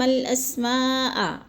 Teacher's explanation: حروف مدہ کے بعد حمزہ اسی کلمے میں آ گیا ہے تو مد متصل کو 4 حرکات کے برابر ہم نے لمبا کر کے پڑھنا ہے